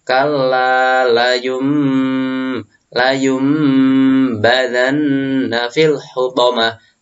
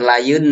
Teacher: Ada huruf mim. Ini menunjukkan bacaan iklab yang dimana nun sukun itu suruh menggantikan dengan mim.